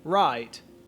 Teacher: if you are from australia you might actually start around the ah vowel saying right